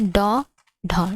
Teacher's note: ड ढ उत्क्षिप्त व्यंजन है आपके ड ढ, ठीक है। ड ढ एक झटके के साथ उच्चारित होने के कारण ये उत्क्षिप्त व्यंजन कहलाते हैं, ड ढ। जिन ध्वनियों का उच्चारण एक झटके में किया जाता है वे उत्क्षिप्त व्यंजन कहलाते हैं, ठीक है।